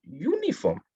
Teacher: Sebab bunyinya ialah Y, U, U. Bunyi Y, bukannya bunyi A, E, I, O, U.